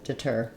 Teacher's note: It sounds like ih. It's the same vowel sound we have in words like did and it, but even shorter and more reduced. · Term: reduced vowel